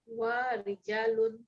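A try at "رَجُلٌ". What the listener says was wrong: Jangan rijalun. Rajulun. Yang rijal itu laki-laki banyak nanti. Ini satu orang baru.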